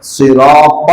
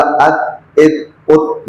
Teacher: طا میں قلقلہ ہے، تے میں قلقلہ نہیں. دوسرا فرق یہ ہے کہ تے باریک ہے اور توئے موٹا ہے.